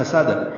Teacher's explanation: سین کو دال سے ملائیں گے, سین سیٹی جیسی آواز سے, حروف صفیریہ میں سے ہے, سیٹی جیسی آواز پیدا ہوگی, دال پہ قلقلہ ہوگا